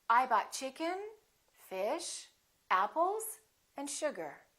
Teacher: have a rising intonation I bought chicken fish apples and sugar the last one will have falling intonation so we go up up up down · Each of those items that you list should have a rising intonation.